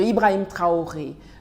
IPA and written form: ibʁaim tʁaɔʁe (Ibrahim Traoré)